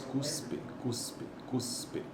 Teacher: Veja que esse S ele é desvozeado, né?